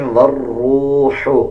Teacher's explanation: آگے دیکھیں والروح، را کے اوپر شد ہے، واو کو را کے ساتھ ملا کے پڑھا جائے گا اور واو کے بعد جو الف اور لام ہے ان دونوں کو سکپ کر دیا جائے گا، واو را زبر ور پڑھا جائے گا۔